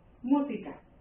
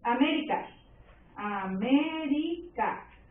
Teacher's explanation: la sílaba tónica se ubica en la antepenúltima sílaba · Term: las palabras esdrújulas